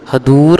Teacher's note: ਹਦੂਰ ਦੇ ਵਿੱਚ ਦਦਾ ਹੈ ਸੋ ਕਿਸੇ ਨੇ ਧਦਾ ਨਹੀਂ ਲਾਉਣਾ